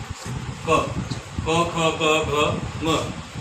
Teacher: बोला जाता है कंठ की सहायता से